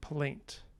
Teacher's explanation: you have a stop, which is very low sonority, then a liquid, then a vowel, and then an off glide of that diphthong, then a nasal, and then another stop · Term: rising sonority